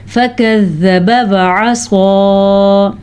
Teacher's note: स्वाद को पुर पढ़ेंगे क्योंकि स्वाद हरूफ मुस्तालिया में से है